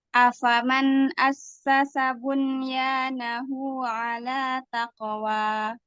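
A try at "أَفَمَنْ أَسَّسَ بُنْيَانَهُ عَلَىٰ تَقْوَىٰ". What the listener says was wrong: Hunya tadi 2 harokat. Bunyanahu. Hunya 2 harokat. Harusnya kan hunya 1 harokat. Kan Ustazah?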